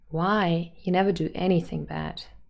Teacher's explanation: the last new content word is anything and we would put the stress on any